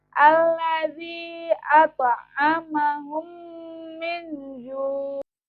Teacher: memasukkan huruf mim ke dalam huruf mim disertai dengan suara gunna sekitar 2 ketukan atau 2 harokat. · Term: idgham misli